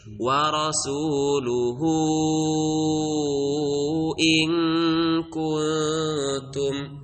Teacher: wa rasuluhu itu kita baca sampai lima harakat. Yaitu namanya mad silah thawilah.